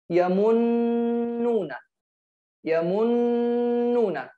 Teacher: We should affirm the nasalization of them by two counts. By two counts. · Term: doubled letters with nasalization